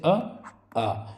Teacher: इन दोनों अ और आ इन दोनों की ध्वनि गले से निकल रही है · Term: कंठ स्वर